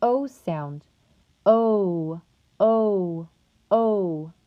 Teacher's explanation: to produce the o sound the back of the tongue will be placed in the high mid position of the mouth your lips will be rounded and your tongue will be tensed